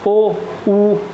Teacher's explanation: ये जो ये हमारे स्वर है ना ये ऐसे स्वर है जिन्हें बोलने में हमारे होठ की आकृति जो है गोल होती है